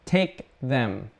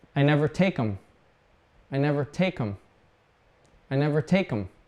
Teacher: We don't say k because we use the back of our tongue to end take. And then to say them, we have to move up and put the tongue in the front of our mouth.